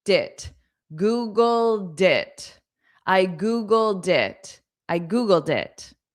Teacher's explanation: Now, when I connect it to it sounds like dit.